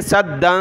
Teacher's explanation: کو سختی کے ساتھ پڑھنا ہے، سدا ومن خلفہم سدا فَأَغْشَيْنَاهُمْ اس دال کو سخت بھی کرنا ہے اور تنوین کی وجہ سے ناک میں آواز پیدا کرنی ہے